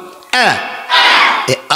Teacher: হলকের শুরু হইতে হামজা উচ্চারণ হয়।